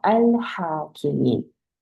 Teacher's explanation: 하 같은 경우는 이제 목에서 하는 소리죠. 람하고 거리가 멀어요. 마크라지가. 그래서 네 발음 따로, 내 발음 따로.